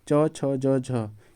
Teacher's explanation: च छ ज झ यह जो होता है यह तालू से बोला जाता